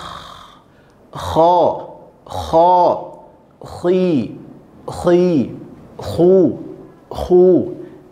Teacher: sekarang dia berada di ujung tenggorokan yang paling atas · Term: huruf k